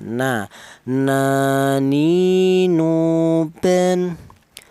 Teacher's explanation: ujung lidah menyentuh langit-langit mulut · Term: huruf nun